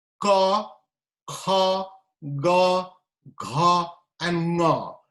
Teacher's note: These are produced using the velar part. That's why they are called velar consonant.